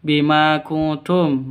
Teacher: Ma panjang dua ketukan. Karena ada alif diawali dengan fat fathah mad asli atau mad thobi'i.